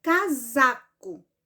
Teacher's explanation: Qual foi o pedacinho mais forte que eu pronunciei? Foi o za, não foi? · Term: sílaba tônica